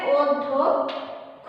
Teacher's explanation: কারণ শব্দের মাঝখানে কি আছে জফলা আছে, সেজন্য এই ব্যঞ্জন বর্ণটা এই ধ ব্যঞ্জন বর্ণটা দ্বিত্ব উচ্চারিত হবে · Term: দ্বিত্ব উচ্চারণ